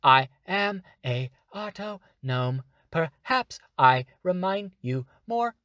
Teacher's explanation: different versus if I release and do the opposite of that so I'm speaking more breathy